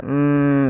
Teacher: ada gunah di lafal mim dan wajib kita tahan dahulu sepanjang dua harakat maka kita tahan dulu suara mimnya m ya dua harakat falamma